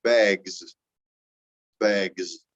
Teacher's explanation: And so if I have two backs, but if I take the word bag, that ends in a G, which is a voiced consonant. And this S becomes sounding like the Z